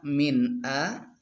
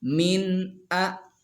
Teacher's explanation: Izhar halqi, karena nun mati bertemu dengan hamzah, karena hamzah termasuk huruf halqiyah, huruf yang keluar dari tenggorokan. Lam yakunil ladzina kafaru min a, nah, izhar dibacanya jelas, nggak boleh dengung, nggak boleh dibaca min a atau dipantulkan min a, nah, itu salah.